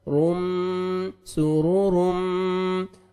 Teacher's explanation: تنوین کے بعد حروف یرملون میں سے میم ہے, ادغام کریں گے غنہ کے ساتھ